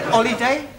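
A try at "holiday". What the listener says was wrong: you keep dropping your aspirat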